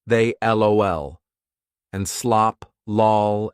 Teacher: now we have to follow the rules of a light L, because there's a vowel